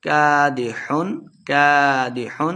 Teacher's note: کادح کادح بغیر غنہ کے پڑھیں گے، اظہار کا قاعدہ ہے